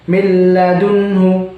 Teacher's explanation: Jadi milladunhu langsung, nggak pakai gunnah. Bukan milladunhu, bukan seperti itu, tapi milladunhu. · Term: idgham bila gunnah